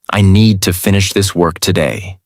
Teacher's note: Need, finish, work are strong. Other words are softer. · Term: stress